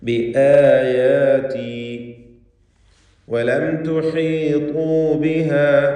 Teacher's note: സാക്കിനത്ത് അമീമിനെ ഇൽഹാർ ഷഫവി നൽകി മണിക്കാതെ വെളിവാക്കണം. തുഹീതു ഹ, ശേഷം ത്വാ, എല്ലാ ഹർഫും ക്ലിയറായി വ്യക്തമായി മഖ്റജിൽ നിന്ന് തന്നെ ഉച്ചരിക്കുക.